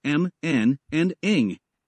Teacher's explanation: nasal consonant a nasal consonant is a consonant sound that is produced by allowing air to escape through the nose this is achieved by lowering the soft palate so that air